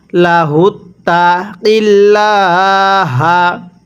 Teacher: আর যদি এই আল্লাহ শব্দের লামের পূর্বে জবর থাকে অথবা পেশ থাকে তাহলে এটাকে মোটা করে পড়তে হয়